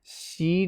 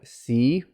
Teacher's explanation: don't make that flat tongue she like in asian east asian languages like korean japanese chinese